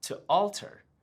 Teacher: We didn't have that intruding W sound